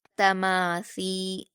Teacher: یہاں پر بھی آپ دیکھیں گے تا پر حرکت جلدی پڑھیں گے، میم پر الف مدہ ہے، اس کو 2 حرکات کھینچیں گے۔ تما، سا پر یا مدہ ہے، اس کو 2 حرکات کھینچیں گے اور سا کو بھی نرمی سے ادا کریں گے جیسے ذال کو ادا کرتے ہیں